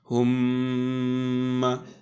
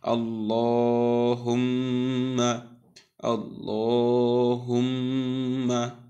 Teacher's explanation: নুন মিমের তাসদিদ উচ্চারণের সময় যে থামার জায়গাটা আছে, যে আমরা প্রথমে সাকিন তারপরে হরকত দিয়ে উচ্চারণ করি, এই সাকিন করার সময় গুন্না করতে হবে। এই জন্য আমরা বলছি হুম্মা।